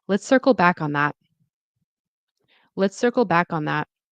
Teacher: Stress is on sir and circle. · So stress on circle back, no, circle back, and that. And then there is a falling tone. It's casual.